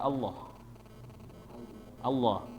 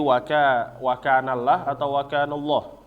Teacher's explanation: Maka jangan sampai dibaca Allah ya La lanya ini di tengah Jangan dibaca la tetapi menjadi tafhim yaitu kayak O